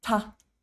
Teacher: So what you do is you want your tongue to be curved up, touching the roof of your mouth, that hard palate behind the teeth, about 0.5 centimeter back